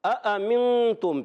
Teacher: یہ دو حمزہ ہیں، دونوں حمزہ کو ہم نے تحقیق سے خوب ظاہر کر کے خوب واضح کر کے پڑھنا ہے